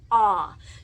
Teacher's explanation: So you're going ah and you're inhaling. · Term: inhale ah